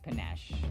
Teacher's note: There's a schwa on the first syllable.